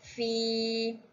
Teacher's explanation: hukum tajwid mad asli. Cara bacaannya panjang dua harakat.